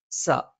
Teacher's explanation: മുൻപല്ലിന്റെ മോണയിലാണ് സ നാവിന്റെ കൂർത്താറ്റത്തിന്െ മുകൾഭാഗം രണ്ടു വരി മുൻപല്ലുകൾക്കിടയിൽ പിന്നിലായിട്ട് വരികയും നാവിന്റെ അറ്റം താഴെ മുൻപല്ലിന്റെ ഉൾഭാഗത്തെ പള്ളയിൽ സ്പർശിക്കുകയും ചെയ്യും